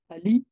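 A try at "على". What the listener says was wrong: It's not ali, it's ala.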